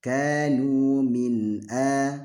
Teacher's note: Juga enggak boleh membaca izhar itu gini, min a, salah, min a, ini juga salah karena seolah-olah ada wakaf di situ, tidak boleh. Karena nun ini walaupun dia izhar tetap ada sifat gunahnya walaupun sedikit. Jadi kanu min a, enggak boleh ada keterputusan antara min dengan a ya.